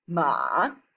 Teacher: the third tone is a low dipping tone it starts quite low then goes even lower before quickly going back up its duration is longer than the other tones start your tone